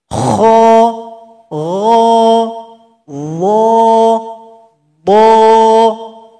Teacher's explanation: ketika membaca suara kita naik ke langit-langit sehingganya pangkal lidah kita juga naik jadi keempat huruf ini dibaca tebal jadi pangkal lidah kita lebih kurang seperti ini naik ke langit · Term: sifat istiala